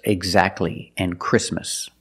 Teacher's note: when you see T between consonants it's silent don't pronounce the T